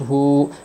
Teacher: الٹا پیش کو واو مدہ کی طرح ایک الف کی مقدار کھینچ کر پڑھے گے